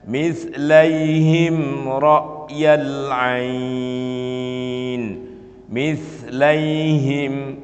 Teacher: mimnya itu dibaca jelas, tidak boleh disamarkan, tidak boleh pula digunnahkan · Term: idhar